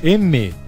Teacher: uma bilabial nasal sonora